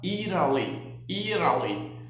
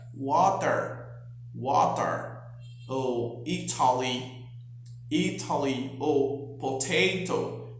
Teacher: Nos Estados Unidos, principalmente, o som do T muitas vezes se parece com o som do R vibrante.